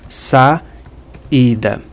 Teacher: eu sei aqui que tem um iato porque eu tô pronunciando o a e o i separado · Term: hiato